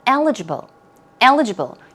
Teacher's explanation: Stress goes right there on the first syllable, eligible. Eligible.